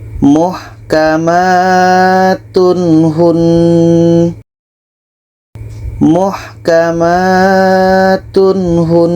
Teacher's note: Ini izhar halki, tidak ada dengung dan harus dibaca jelas.